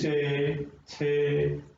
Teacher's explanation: दांतों से थोड़ा सा ऊपर, जैसे चे छे, जो दांत है इनसे थोड़ा सा ऊपर का स्थान होता है, उसको बोलते हैं तालु। तो जहां हम बोल करके देख लेंगे वर्ण को, तो जहां तालु को स्पर्श कर रही है हमारी जीभ, तो उसको हम तालव्य बोल देंगे।